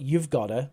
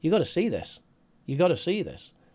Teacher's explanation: Even we drop the v. So not you've gotta, but just you gotta.